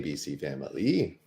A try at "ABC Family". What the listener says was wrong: I think you guys are all throwing an extra syllable in there. It's family.